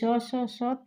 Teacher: ऊष्म व्यंजन में ये स स स तो क्या होते हैं, अघोष होते हैं